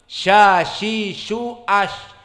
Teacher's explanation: Al-hams, ada kebocoran nafas, dan juga rokhawah, ada kebocoran suara. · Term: sifat sya